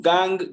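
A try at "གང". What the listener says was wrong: Not gang, kang.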